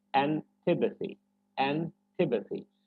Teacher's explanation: So tipathy is the part that should be stressed.